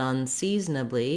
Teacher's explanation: So both words are stressed on the second syllable.